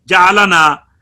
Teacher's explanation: لام کو ادا کر کے زبان کی نوک مخرج سے اٹھا کر دوبارہ نون کی ادائیگی میں تالو پر لگائی جاتی ہے